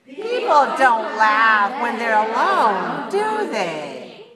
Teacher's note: you want to use a falling intonation because you're pretty sure this is true